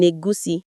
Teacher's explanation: You can even block the air in your mouth and send it out through your nose, like that ing sound in egusi.